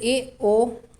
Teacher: अर्धसंवृत, half close, जहाँ पर आधा मुंह बंद रहेगा वहाँ पे अर्धसंवृत